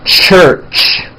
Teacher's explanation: When you put these two sounds together, you get a ch, ch. It's an unvoiced sound, and you can hear the sound, for example, at the beginning and at the end of the word church.